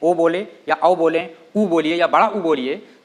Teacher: सब में जो है आपका जो होंठ होता है उसका सहयोग लिया जाता है। बिना होंठ गोल हुए इसका उच्चारण नहीं हो सकता है। तो हम कह सकते हैं कि ये जो आपका ओ और औ है ये आपका ओष्ठ है, लेकिन पूरी तरह से ओष्ठ नहीं।